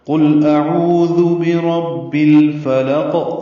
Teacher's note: تو قاف کو ضرور موٹا کیجیے، پر کیجیے، حروف مستعلیہ میں سے ہے، لام سے ملائیں، لام پہ اظہار کریں۔